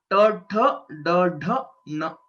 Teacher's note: These letters are called retroflex letters. The sthana is murdha because your tongue is pointing towards your head. Murdhanya varnaha.